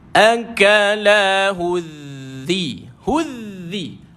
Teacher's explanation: Beri depan hu, mesti ada sifat hamas, angin keluar.